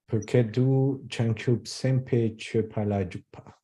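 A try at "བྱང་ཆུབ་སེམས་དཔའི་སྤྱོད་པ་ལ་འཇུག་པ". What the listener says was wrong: Yeah, give me a little prenasal because there's an open vowel here. Chupalanjupa. I would say P-A-Y. Here, P-A-Y. Chupala Jupa.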